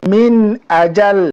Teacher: নুন সাকিনের বামে হামজা আসলো, আমাদেরকে গুন্না ছাড়া স্পষ্ট করে পড়তে হবে। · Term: ইজহার